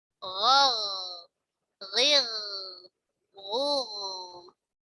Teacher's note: Ghain punya sifat isti'la, ya. Pangkal lidahnya terangkat.